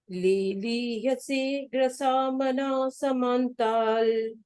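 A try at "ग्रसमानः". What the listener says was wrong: Grasmana. There's no grasa.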